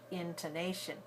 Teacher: The first syllable has a clear vowel I, the second syllable has a schwa t, and the third syllable is strong and long and clear because it's stressed, nay, and the fourth syllable shin is very short, intonation.